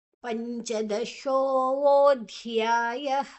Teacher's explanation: ಧ್ಯಾಯ ಧ ಮಹಾಪ್ರಾಣ ನಂತರ ಯಾ ದೀರ್ಘ.